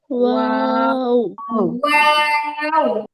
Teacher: দুই ঠোঁট থেকে তো হয়, ঠিক আছে, তারপরে একটু ভিন্নতা আছে। যেমন ওয়াও উচ্চারিত হয় দুই ঠোঁট গোল করে, মাঝে সামান্য ফাঁকা রেখে।